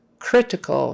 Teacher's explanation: make sure you get an R not an L critical tongue goes back not CL I don't want to say critical that sounds strange